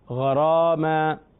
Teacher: غین حروف مستعلیہ کی وجہ سے پر، اور را اپنے زبر کی وجہ سے پر، یعنی موٹا پڑھیں گے، اس میں فخم ہے.